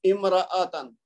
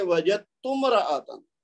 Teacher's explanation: तो लेकिन इमराअतन अलहदा पढ़ेंगे तो हमजा बोल रहे हैं इमराअतन, लेकिन जब मिला के पढ़ेंगे तो हम पढ़ेंगे वजदतुमराअतन। तो ये जो ता है, ता को हम मीम के साथ मिला देंगे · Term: हमजातुल वस्ल